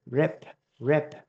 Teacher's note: cái âm này là âm p, phía sau này là bật hơi nha các bạn